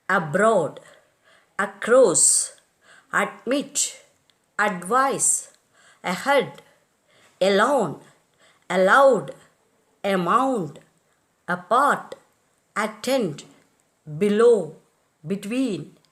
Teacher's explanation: weak prefixes are accented on the root and not the prefix.